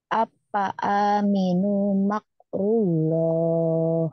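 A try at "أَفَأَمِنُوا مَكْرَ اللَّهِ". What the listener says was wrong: Afa aminu makrallah. Bukan makrullah ya. Makrallah. Afa aminu makro. Bukan dru. Afa aminu makrallah. Apa? Apa aminu makro rawlah. Afa aminu Afa aminu makrallah.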